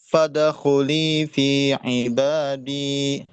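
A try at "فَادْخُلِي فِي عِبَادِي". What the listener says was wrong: Pantulan dalnya jangan ke arah fathah, Pak. Jangan fadakhuli, ya. Fad. bibirnya ditarik aja. Jangan fadakhuli, tapi fad. Fadakhuli, ya. Sama dalnya, ya. Dal digusi, jadi bukan ibadi, tapi ibadi, ibadi.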